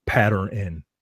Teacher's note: when they pronounce the word pattern, like they add an extra syllable. They add an N, like the N has its own syllable.